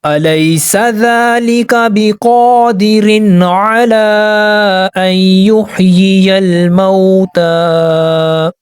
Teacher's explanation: کھڑا زبر کو ہم نے ایک الف کے برابر کھینچنا ہے اور ہم نے سٹاپ کر دینا ہے